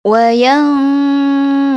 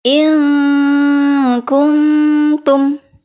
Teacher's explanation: Jadi menurut makhraj hurufnya qaf dan kaf ini berada di pangkal tenggorokan, qaf dan kaf. Jadi cara pengucapan ikhfa-nya itu lebih mengarah ke eng. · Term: ikhfa ab'ad